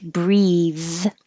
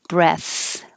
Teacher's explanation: it makes the TH voiced, and it makes the vowel before it the long sound, like breathe.